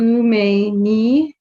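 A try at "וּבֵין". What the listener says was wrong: That's a vet. It's a bet without a dot, so it's a V sound. the third. That's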